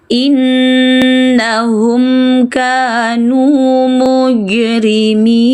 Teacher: Innahum mim mati bertemu selain mim dan ba, baca jelas mim, jangan dengung.